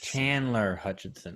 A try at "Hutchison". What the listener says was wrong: It's Hutchison, not Hutchinson.